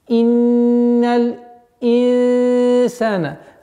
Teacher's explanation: Здесь у нас ихфа, мягкая ихфа в размере двух огласовок